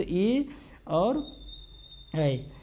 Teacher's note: कंठ और ताल दोनों की सहायता से अगर उच्चारण करते हैं तो ए और ऐ